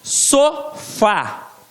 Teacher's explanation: Está na última sílaba, a sílaba forte. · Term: oxítona